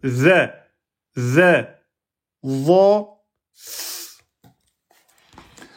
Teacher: l'arrière de la langue se gonfle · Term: lettre Z